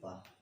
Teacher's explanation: पा वर्ग जो है ओष्ठ से किया जाएगा।